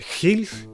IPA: xiɮ